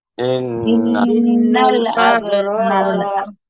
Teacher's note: ইন্না এখানে ওয়াজিব গুন্না, আব কলকলা হবে, র মোটা হবে আর এক আলিফ টান হবে